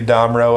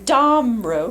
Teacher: the pronunciation, the emphasis is on the first syllable